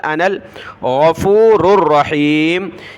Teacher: نون کو لام کے ساتھ ملایا، نون لام زبر نل، انل غفور الرحیم۔